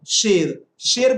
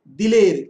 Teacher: याए मजहूल उस या को कहते हैं जिससे पहले जेर तो हो लेकिन उसको हम लोग खींचकर नहीं पढ़ते।